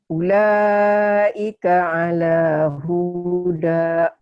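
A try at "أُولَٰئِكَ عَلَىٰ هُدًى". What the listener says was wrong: Pendek. Ulaika ala huda.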